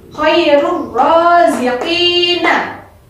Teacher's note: Maka nun sukunnya dileburkan ke dalam huruf sesudahnya, yaitu ra. Dibaca satu ketukan. · hukum bacaannya tidak boleh berdengung, tetapi melebur nun sukun atau tanwin ke dalam huruf sesudahnya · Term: idgham bila gunnah